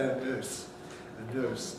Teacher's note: only if you come from south wales would you use lip rounding